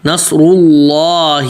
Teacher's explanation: لام بھی موٹا پڑھیں گے کیونکہ اللہ کے نام سے پہلے کیا ہے، پیش ہے